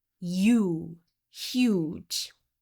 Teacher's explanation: the long u sound begins with an additional y sound